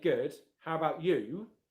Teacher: You is one of the words that you're stressing in that phrase. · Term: strong form